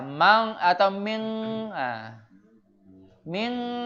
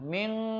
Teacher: Nunnya tetap harus ada, tapi dia disamarkan. Jadi larinya ke belakang. Ming, nah bunyinya ang. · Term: ikhfa